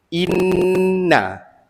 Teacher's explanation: Okay, jadi hukum di sini, hukum dia wajibul gunnah. Inna, in tu dengung dua harakat.